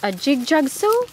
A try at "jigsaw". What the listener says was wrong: No, not a jig-jag, a jig. Jigsaw. A jig-jig, but a jigsaw. Jig-jig. Not jig-jig.